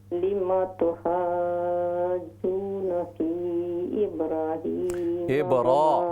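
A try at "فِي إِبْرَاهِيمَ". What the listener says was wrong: फी इब्राहीम, रा के ज़बर खड़ा ज़बर है, इसको लंबा कीजिए। ये फ़ी इब्राहीम, रा का खड़ा ज़बर है, इसको लंबा कीजिए। फ़ी इब्राहीम,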